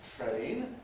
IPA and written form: treɪn (train)